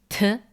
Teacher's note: Theta, pronounced like an aspirated t, t, but later became th, a fricative th.